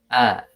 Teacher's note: secara makhraj hamzah ini berada di pangkal tenggorokan ya. Pangkal tenggorokan di sini di bawah.